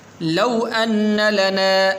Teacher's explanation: لو یہاں پر واو حروف لین میں سے لمبا نہیں کریں گے